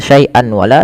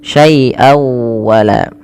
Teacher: masukkan suara tanwinnya pada lafal syaian kepada huruf wau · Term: idgham